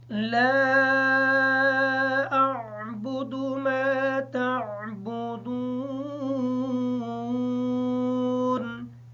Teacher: میم کے بعد الف ساکن ہے، میم کو تھوڑا سا لمبا کر کے پڑھیں گے تاکہ الف ادا ہو جائے